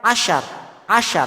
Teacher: Tengah lidahnya naik ke langit atas, tapi nggak sampai nempel. Belakangnya nggak ikut naik.